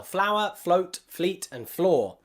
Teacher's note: The F has to really quickly join and blend together with the L or the R.